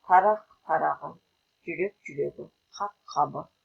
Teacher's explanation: Регрессивті ассимиляция мынадай жерлерде жиі ұшырасады. Дауыстыдан басталған қосымшаның ықпалынан сөз алдындағы қ, к, п қатаң дауыссыздары Г, Г, Б дыбыстанады.